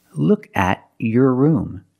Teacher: when you have a t before a y in two separate words and you link the pronunciation of the two words you will hear the CH sound